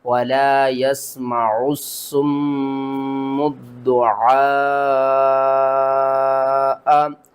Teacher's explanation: قرآن پاک میں میم مشدد جب بھی آ جائے تو اس کو ہم غنّے کے ساتھ پڑھتے ہیں، یہاں پر آپ نے غنّہ کرنا ہے، اور عین کے اوپر دیکھیں تو بڑی مد ہے، اس کو آپ نے 5 الف کے برابر کھینچ کر پڑھنا ہے